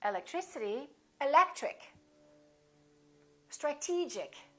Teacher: the syllable before the ic gets stressed